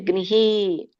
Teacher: ಈ ಸ್ವರ ಕೂಡಿರುವುದರಿಂದ ವಿಸರ್ಗ ಕೂಡ ಇ ಬರುತ್ತೆ